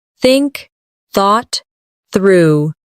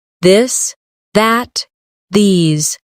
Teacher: Put your tongue between your teeth and push air out for think. For this, your tongue touches the same position but with your voice turned on. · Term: th sound